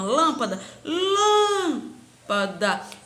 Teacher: Eu tirei o lã, que é tônica, e as demais são átona.